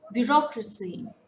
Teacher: Bureaucracy, it's again a four-syllable word. Stress falls on the second syllable.